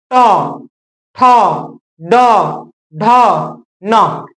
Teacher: ये मूर्धा से निकलता है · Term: ट वर्ग